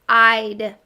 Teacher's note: we hear that long vowel sound, I, because it's an open syllable.